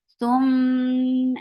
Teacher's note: This gunna is akmal, so keep the sound in your nose for a longer time. Thum and fatha is very short.